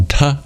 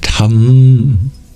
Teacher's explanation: I've turned that syllable ta into one that has an anuswara at the end, tam, turning it into a nasal